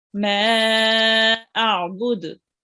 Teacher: pronounce the ain with them from the middle of your throat